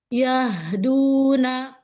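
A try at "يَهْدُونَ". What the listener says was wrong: Nanya jangan pakai hamzah, itu masih hamzah.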